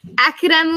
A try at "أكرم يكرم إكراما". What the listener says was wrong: no, it's not akramu. There's no akramu.